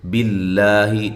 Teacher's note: لفظ اللہ کا لام باریک ہو رہا ہے، اس سے پہلے زیر ہے